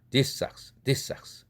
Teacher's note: these라는 z라는 발음인데 socks 할 때 뒤에 있는 스 발음의 영향을 받아서 거꾸로 뒤에 것이 앞에 거에게 영향을 미리 미치는 거죠. 역행으로 동화시키는 거죠. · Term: 역행동화